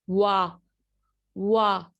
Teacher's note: W as bilabial for place of articulation because the two lips are rounded during its production. What they are doing, the lips are in a round position, ठीक है, वाह वाह।